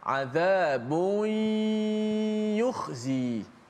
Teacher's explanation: kita masukkan suara nun mati ataupun tanwin itu ke dalam ya beserta. Bukan selepas itu gunnah, beserta gunnah. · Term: idgham